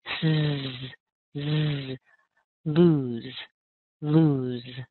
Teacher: Now, don't get confused because L-O-S-E without the two O's is lose. It's almost the same as loose. The only difference is that final sound has a voice. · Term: Z sound